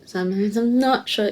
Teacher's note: the stress is on not yeah sometimes i'm not sure yeah it's not instead of sure